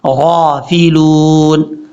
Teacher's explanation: غین کو لمبا کرنا ہے کھڑا زبر کی وجہ سے